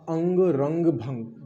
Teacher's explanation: अनुस्वार में हमने देखा था कि इसमें केवल और केवल नाक से ध्वनि सबसे ज़्यादा निकलती है।